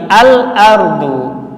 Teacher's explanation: Lamnya jelas izhar, ditampakkan.